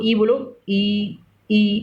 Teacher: उससे जब टच करता है तो कोई भी वर्ड बोलो तो उससे देखो, ई बोलो, ई अपने आप ऊपर टच करेगा जीभ, तो ये क्या है, तालव्य है।